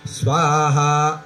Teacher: स्वाहा हे पद स्वरित आहे उदात्त नाही अनुदात्त नाही